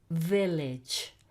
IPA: vilidg